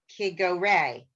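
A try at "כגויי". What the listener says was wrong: There's no resh there. There's two yuds and above. Could go yay. Yay, you got it. Could go yay.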